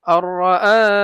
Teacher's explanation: নুন সাকিনের পরে রা আসছে ইদগামে বেলা গুন্না মানে গুন্না ছাড়া মিলাইয়া পড়বো হামজাকে রার সাথে মিলাইয়া পড়বো নুনটাকে বাদ দিয়ে আর খারা জবর